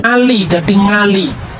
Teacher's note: Orang Jawa tidak bisa ngomong huruf Ain, Ali jadi Ngali